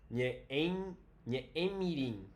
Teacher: this ng basically just becomes the nasality of the e